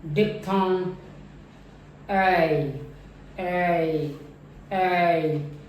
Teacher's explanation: जो first part है वो काफ़ी प्रोमिनेंट रहता है, ज़्यादा सुनाई देता है। और ज़्यादा प्रोमिनेंट होने का मतलब ये है कि ज़्यादा स्पेस ऑक्यूपाई जो है इस फनीम का फर्स्ट पार्ट करता है। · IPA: /eɪ/